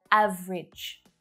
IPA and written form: 'æv ridʒ (AVERAGE)